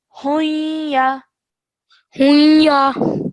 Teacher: ha joins onto the ya with a light nasal sound in between because of idgham naqis rule